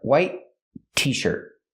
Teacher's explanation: The T in white is a stop T. Not white, but white t-shirt.